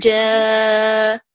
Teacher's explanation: there is a mad on ja, and we will prolong it for 5 seconds